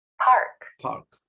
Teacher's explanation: are you feeling that puff of air on your hand as you pronounce the words that start with p